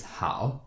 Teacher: is better to think of the third tone as a deep low tone